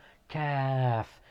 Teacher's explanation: It's like you're saying kim, kimono, kilo. It is pronounced from the back of the tongue, but it's actually closer to the mouth from the qaf.